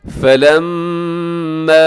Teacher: फलम्मा, मीम मुशद्दद गुना कीजिएगा।